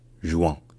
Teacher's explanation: les Belges, en fait, ne savent pas vraiment dire le UE français, et l'assimilent, le mélange avec le OUE. Donc ils disent juin.